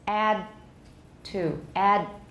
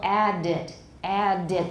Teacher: we're already turning off the voicing to get ready for t